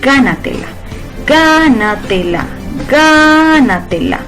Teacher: Si nos fijamos en ga lleva su sílaba tónica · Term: sobreesdrújulas